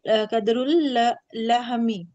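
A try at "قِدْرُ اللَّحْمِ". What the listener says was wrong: कदर। कदर तो उर्दू में बोला जाता है ना, कदर। किद्र। زیر کے ساتھ ہے، قدر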